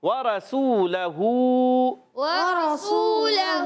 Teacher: سین واو پہ سو، واو مدہ ہے، سین سیٹی کے ساتھ ادا ہوگا، اور لام پر زبر، حرکتیں نہیں کھینچیں گے، ہا پر الٹا پیش ایک الف کھینچیں گے۔